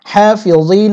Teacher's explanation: ফি যা ইয়াজি এখানে টেনে পড়তে হবে নুন জবর না হাফিযিন ওয়াকফের সময় নুন সাকিন হবে এবং এখানে 3 লিপ লম্বা করতে হবে